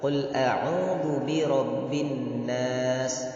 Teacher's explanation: Qul a'udzu bi rabbin nas, itu ada nun bertasydid. Jadi itu didengungkan. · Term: gunnah